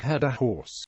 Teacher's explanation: unlike many other varieties of English language in England there is no h dropping in words like head